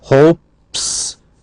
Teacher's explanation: Hopes, p, s, p is unvoiced, s. So we have an unvoiced marker.